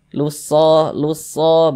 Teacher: Tidak ada tanda bacanya. Karena huruf lamnya dibaca idgham, jadi dari lu langsung masuk ke huruf shad ini. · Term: idgham syamsiyah